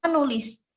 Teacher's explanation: Nah, pada contoh yang sampingnya ini ada kata dasar tulis dengan mendapatkan prefiks me sehingga menghasilkan kata bentukan menulis. Ini terjadi pelepasan fonem T diluluhkan dengan nasal N.